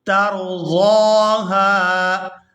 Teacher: ضاد کو یہاں پر کھینچ کر ادا کیا جائے گا کیونکہ اس کے اوپر کھڑی زبر ہے، اور آگے ہا کو الف مدہ کی وجہ سے کھینچ کر ادا کریں گے۔